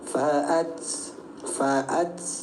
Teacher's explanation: Ertinya percikan. Saat mengucapkan huruf ta ada sedikit percikan angin di lisan kita. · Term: sifat hames